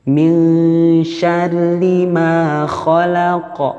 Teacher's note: Nun sukun bertemu dengan huruf shin. Artinya harus disamarkan. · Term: ikhfa